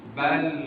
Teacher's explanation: bal ada durasinya tapi tidak memanjang bal dan berhenti